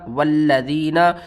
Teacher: لام کے اوپر آپ نے سختی کرنی ہے تشدید کی وجہ سے